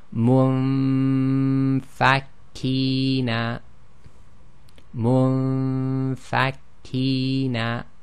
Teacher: We'll do the ghunna on the noon sakin, but we're going to move straight to the articulation point of the fa.